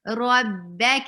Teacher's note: ربك, ra is heavy, ka is light.